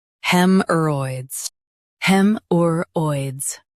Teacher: Stress hem and soften or.